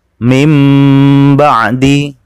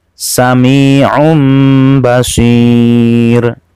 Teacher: Lama dengungannya kira-kira 1,5 alif atau 3 harokat